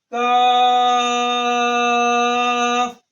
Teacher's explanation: یہ کاف زبان کی جڑ اور تالو کے سخت حصے سے ادا ہوتا ہے